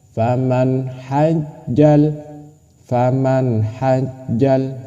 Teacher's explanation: Nunnya jelas, H-nya juga jelas. Ketika nun masuk ke ha itu harus sama-sama jelas. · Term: izhar